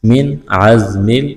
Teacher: نون ساکن کے بعد عین ہے، حروف حلقی ہے، اظہار کریں گے، یہاں پر غنہ نہیں کریں گے۔